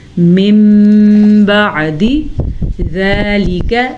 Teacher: نون ساکن کے بعد حرف با ہے تو نون ساکن میم میں بدل جائے گا. میم پڑھا جائے گا, نون نہیں پڑھا جائے گا, لیکن غنہ ضرور ہوگا.